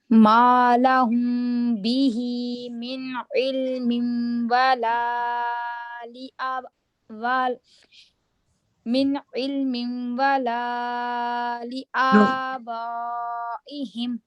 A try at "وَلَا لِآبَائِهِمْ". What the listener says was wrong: ولا کو آپ زیادہ اسٹریچ کر رہی ہیں, لام کو صرف آپ نے 2 فنگر اسٹریچ کرنا ہے. ولا 2 فنگر جی.